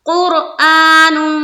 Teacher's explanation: قاف کی حرکت کی وجہ سے، قاف کے اوپر پیش ہے تو اس را کو پر کریں گے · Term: را پر